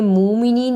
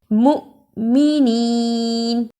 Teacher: مؤمنین، اسے مومنین نہیں پڑھنا، میم پیش حمزہ مؤ، جس حمزہ پر جزم ہو اس کو تھوڑا جھٹکا لگا کر پڑھتے ہیں